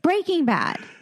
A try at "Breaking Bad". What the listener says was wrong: No, Breaking Bad. The emphasis is on how it's breaking, not that it is breaking. It's Breaking Bad. No, that's not what Breaking Bad is.